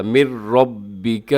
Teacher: اس میں نون کی آواز کو بالکل ختم کر دیں گے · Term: بغیر غنے کے